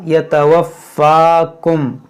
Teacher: فا کے اوپر کھڑا زبر ہے تو اس کو تھوڑا کھینچیں گے